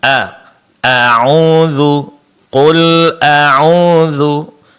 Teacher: Untuk huruf hamzah jangan lupa ditipiskan, Pak. · Dan bunyi fathahnya disempurnakan dengan membuka kedua bibir.